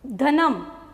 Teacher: ધનમ, તો ધ બોલશો તો પણ તમારા તાળવાને જીભ અડશે.